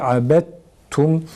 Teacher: Abet, dal abed değil abet şeklinde okunacak şekilde. Sonra daldan ta'ya çevrilen ta'yı tum zamirindeki ta'da idgam ediyoruz. Abet tum, sanki şeddeli bir tane ta varmış gibi abet tum şeklinde okuyoruz.